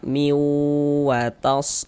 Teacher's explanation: Bunyi tanwinnya dimasukkan ke huruf waw sehingga dibaca miwatas seperti itu. Kemudian di bagian miunya itu suaranya itu kita tahan, kita panjangkan sejenak kira-kira sepanjang 2 harokat kita gunakan seperti itu. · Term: idgham bi gunnah